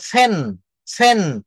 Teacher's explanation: মহাপ্রাণ যেটা বললে বেশি বাতাস নির্গত হয় বেশি প্রেসার পড়ে